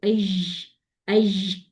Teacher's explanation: उसके लिए आपने क्या करना है कि फौरन से आपने जो है वो काम क्या करना है, आपने आवाज बुलंद करनी है, जुबान बुलंद नहीं करनी। अगर जुबान बुलंद कर देंगे, जुबान को ऊपर उठा देंगे, पैलेट के साथ लगा देंगे, तो ऐश, ऐश, ये वाली साउंड बनेगी। आपने सिर्फ आवाज को उठाना है, ठीक है।